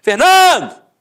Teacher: A sílaba tônica? No NAN. Então você mata que a penúltima sílaba é a sílaba tônica.